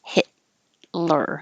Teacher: the t and the l are made in the same place so you don't release the t hit you hold it hit lure and then pull it back